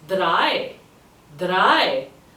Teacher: Very close to dry in English, but a bit more emphasis on the R